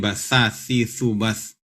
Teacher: Tha, makhrajnya adalah ujung lidah bertemu dengan gigi atas, ujung gigi atas